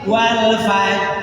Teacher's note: walfaj lidahnya hanya bersiap-siap mengucapkan R